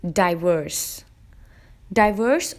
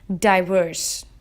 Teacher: has two syllables die and worse and as you would guess the syllable stress is on the second syllable